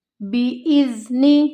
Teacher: یہاں پہ فیہا بإذن ربہم، بإذن، حمزہ کو زال کے ساتھ ملانا ہے، زال نرمی سے ادا ہوگا، دونوں دانتوں کے درمیان زبان کی نوک کو رکھتے ہوئے، نون متحرک، نون کو نہیں کھینچنا، ربہم نہیں پڑھنا اس کو، ربہم، ربہم، جیم کا سائن ہے تو ہم نے یہاں پر رکنا ہے، وقف کرنا ہے۔